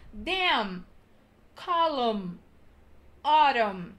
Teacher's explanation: Então, as três palavras terminam em N, mas é como se eles não estivessem ali, porque a gente fala dam, column, autumn, alright? Então, a palavra fecha no M